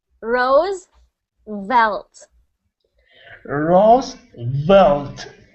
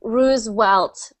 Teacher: sometimes I heard you say the v's as W's so I heard uh ruse welt or something like that so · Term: V sound